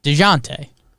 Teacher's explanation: i learned to pronounce dejante's name by saying de jonte fast you get a sort of z sound at the start of the second syllable